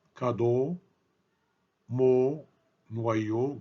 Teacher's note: Quand on prononce le O fermé, notre bouche est arrondie et presque fermée.